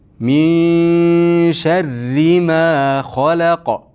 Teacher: Min sharri ma deganimizda ikki harakat miqdori cho'zamiz. Xalaq, xo yo'g'on, la ingichka, qof yo'g'on. Bu ikkalasining o'rtasidagi lamga e'tibor qarating.